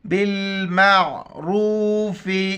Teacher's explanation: یہاں پر را کے اوپر پیش ہے تو را کو موٹا کر کے پڑھیں گے، با کو لام کے ساتھ ملائیں گے، عین کو گلے سے ادا کریں گے